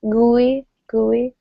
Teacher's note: You can lengthen the first syllable a little more if you want.